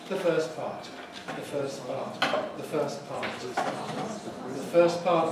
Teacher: Because in English, when we have a word like first, and the next word begins with a consonant, we very frequently drop the T sound, we omit it, we leave it out. We don't say first part, we say first part.